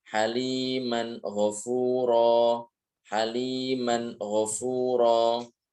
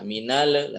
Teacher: Cara membacanya adalah dengan menjelaskan dengan menampakkan huruf nun dari tempat keluarnya, dari makhrajnya tanpa dengung yang sempurna. Berarti ya jangan sampai dengung dua harakat. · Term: izhar halqi